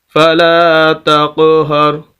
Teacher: فَلَا تَقْهَرْ، قلقلہ کریں گے، قاف حروف قلقلہ میں سے ساکن ہے، تو قاف کی آواز کو ہلا کر پڑھنا قلقلہ کہلاتا ہے۔